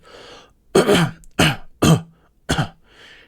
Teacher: there's the sort of hard K almost at the front and then there's the grunt almost underneath so devoicing it we take away the grunt it's just that